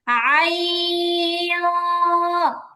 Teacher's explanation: নাকে লাগায় গুন্না করা, বাংলা অনুস্বারের মতো গুন্না করবেন। আই, এরকম নাকে নিয়ে গুন্না করতে হবে।